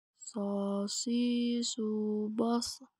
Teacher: Dan sifat serta karakternya pun jauh berbeda dengan huruf sin. Yang membedakan antara sin dan shot adalah suara menebal saat kita melafalkan huruf shot. · Terdengar suaranya menebal, beda dengan sin.